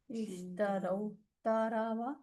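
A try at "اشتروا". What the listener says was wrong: نہیں تا نہیں آئے گی، تا تو ایکسٹرا ہے. شین را اور واو، شرو اور واو.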